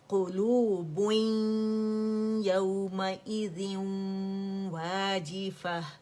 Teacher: تنوین کے بعد ہمارے پاس یا آ رہا ہے تو ادغام ناقص بالغنہ ہو رہا ہے